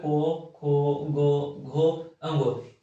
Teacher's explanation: ये जो दोस्तों बोलते समय हवा डायरेक्ट कंठ से निकलती है